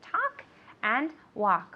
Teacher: with the verb talk and walk, the L is completely silent, okay? We don't pronounce it.